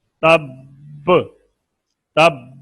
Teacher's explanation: تب تب دبا کر پھر قلقلہ نکلے